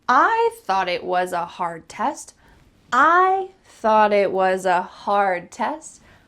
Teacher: The word hard and test are also going to be emphasized, and the middle part is just linked together.